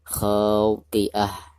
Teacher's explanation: Ketika membaca kha-nya dipanjangkan 2 harakat karena dihukumi mad tabi'i.